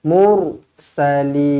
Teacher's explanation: Lutinil mursalin. Baik, ra dibaca dengan tebal kerana huruf sebelumnya berbaris hadapan